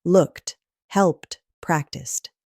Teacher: If a word ends in a voiceless sound, like P or K, that ed sounds like a sharp T.